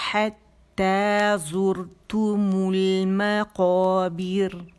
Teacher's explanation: یہ باریک را ہے کیونکہ اس سے پہلے زیر آ رہی ہے